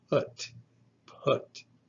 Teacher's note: The P is the labial stop that is voiceless. There's no use of the vocal cords